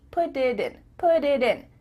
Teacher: Because instead of spending the time to let the air come out of your mouth, your tongue is just tapping the top of your mouth to make a D